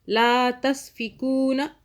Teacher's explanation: نون کو نہیں کھینچنا، لا کو کھینچا ہم نے